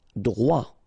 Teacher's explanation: Droit. So final T not pronounced.